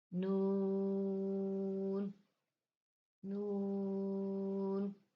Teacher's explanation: نون زبان کا کنارہ اور انیاب سے ثنایا تک کے دانتوں کی جڑوں سے ادا ہوتا ہے